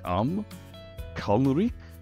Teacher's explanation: so emphasis on the first syllable CUM